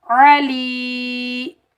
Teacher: لام یا زیر لی، علی، عین کو ہم حلق کے درمیان سے ادا کریں گے